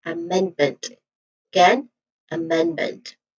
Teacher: mend. Again, mend, which is the primary stress of this word